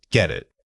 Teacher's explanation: The key here is that we don't pause between the two words. The final from get immediately blends into the vowel of it.